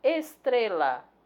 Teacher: Estrela, a sílaba tônica é tre, então ela é paroxítona, mas não é acentuada graficamente.